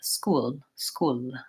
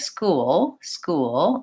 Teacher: you can hear how I'm using a dark L in that word